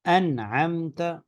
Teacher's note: تو وہاں پہ غنہ نہیں ہوگا، اور نون کو اپنے مخرج سے بہت ظاہر کر کے پڑھا جائے گا